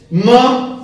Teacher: म की आवाज नाक से निकलती है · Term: अनुनासिक के वर्ण